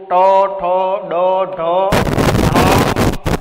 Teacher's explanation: તો મૂર્ધન્ય કે જેના ઉચ્ચારણમાં જીભનો જે અગ્ર ભાગ છે એ ઊંધો વળીને સહેજ કઠોર તાળવાના કોઈ પણ ભાગને સ્પર્શ કરે છે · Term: મૂર્ધન્ય વર્ણો